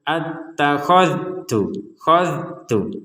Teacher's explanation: dzal sukun di sini jangan sampai dipantulkan. Attakhadh, khadh, tidak ada pantulan.